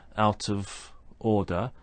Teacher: For example, we have consonant sound to vowel sound linking in phrases such as out of order, where the final consonant sound links to a following vowel sound